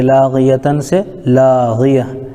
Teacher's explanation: گولتا پر وقف کرنے کی وجہ سے یہ ہائے ساکنہ بن جائے گی